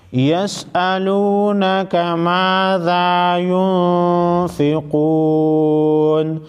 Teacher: نون ساکن کے بعد حروف اخفاء میں سے فا ہے. نون ساکن پر حقیقی اخفاء حقیقی ہوگا.